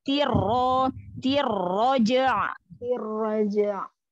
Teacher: Ro-nya langsung tafhim ya.